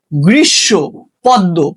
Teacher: শব্দের শেষে মফলা থাকলে মফলার উচ্চারণ হয় না।